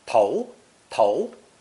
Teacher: this character is pronounced second tone